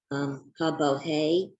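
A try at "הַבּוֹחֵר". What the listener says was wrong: Bocher. I think there's a resh at the end there.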